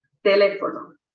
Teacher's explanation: En las esdrújulas, el acento está en la antepenúltima sílaba, es decir, la tercera por atrás.